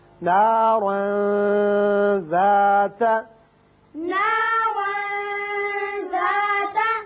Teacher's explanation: تنوین کے بعد حروف اخفا میں سے ذال ہے، لہذا یہاں تنوین کے نون پر اخفا ہوگا